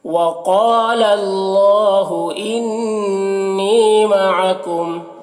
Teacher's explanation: وَقَالَ، قاف کو پر پڑھیں گے اور الف مدہ ہے، اسے ایک الف کے برابر کھینچیں گے، اور اللہ کو پر پڑھیں گے اور کھڑا زبر ہے، اسے ایک الف کے برابر کھینچیں گے۔ انی، نون مشدد غنہ ہوگا اور یا مدہ ہے، اسے ایک الف کے برابر کھینچیں گے